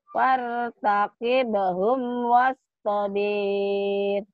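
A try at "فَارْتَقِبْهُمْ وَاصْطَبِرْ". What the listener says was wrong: Kenapa panjang? Kenapa panjang? Ayo, coba lihat lagi. Ya, baca lagi. Kenapa panjang? Fartaqibhum wastabir. Enggak ada yang panjang kan?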